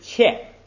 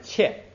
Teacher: 前边的嘴张大一点，后边嘴张小一点